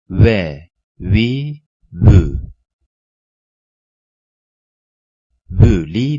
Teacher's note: Vav dudak uçları kapanmadan büzülüp ileri doğru uzatmak suretiyle çıkar